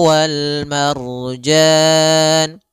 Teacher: Kemudian pada lafal wal marjan di sini ada alif lam, maka kembali lagi kita namakan dengan alif lam qamariyah, yaitu alif lam yang ditulis dan dibaca. Alif lam qamariyah, yaitu lamnya dibaca dengan jelas suara lamnya.